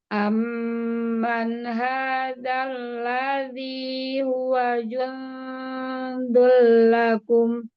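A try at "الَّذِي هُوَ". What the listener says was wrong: Monyong lagi ya.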